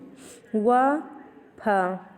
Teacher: दंतोष्ठ है निचले होठों और ऊपर के दांतों से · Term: दंत ओष्ठ